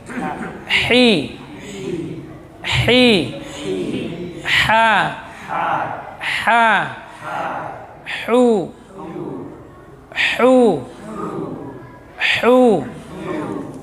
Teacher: rakhawah keluar dari tengah tenggorokan.